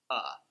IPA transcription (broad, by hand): ə